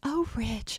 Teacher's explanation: It was really funny because when Brooke's being nasty to somebody, she has a much sharper tone in her voice. And then when she's talking to Ridge, she does this very breathy voice.